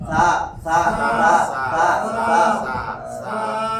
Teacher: এখন এটা উচ্চারণ হবে জিহ্বার আগা, এই দাঁতের আগায় লাগাইয়া সা